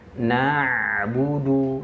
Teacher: huruf ain itu tidak ada sifat syiddah ataupun suara yang tertahan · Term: mengalir